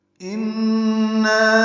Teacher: نون مشدد ہے، اس میں غنہ ہے اور نا الف مدہ ہے، 2 حرکات لمبا ہے